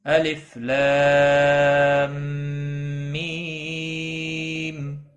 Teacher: اور میم مشدد پر غنہ بھی ہوگا